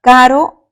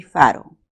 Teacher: K es oclusivo. En cambio, la F es un fricativo